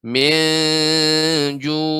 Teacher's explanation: ikhfa dengan ya lidah tidak boleh lengket ke langit-langit. Dibuka sedikit rahangnya. Minju. Ini juga ainnya ini ya ketika disukunkan, ainnya tetap harus nampak.